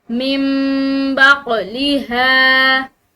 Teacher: قاف یہ حروف قلقلہ میں سے ہے، اس کو ہلاتے ہوئے ادا کریں گے · نون ساکن کے بعد جو ہے اگر با آ جائے تو وہ نون ساکن جو ہے وہ میم سے بدل جاتا ہے، یعنی کہ اس نون ساکن کی بجائے میم پڑھی جاتی ہے، جیسے کہ یہاں پر تنبتو اس طرح نہیں پڑھا جائے گا بلکہ اس نون کی بجائے میم پڑھی جائے گی۔ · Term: اقلاب